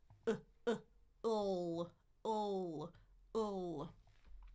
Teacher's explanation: We've done the dark L, tongue in the back, full. My tongue is already in the back for that horseshoe.